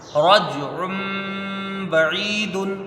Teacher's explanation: با میں زبر ہے، اس کو جلدی پڑھیں گے، عین یا زری، یہاں یا مدہ ہے، اس کو ایک الف کی مقدار کھینچ کے پڑھیں گے، دال کے اوپر دو پیش کی تنوین ہے، رجع بعید.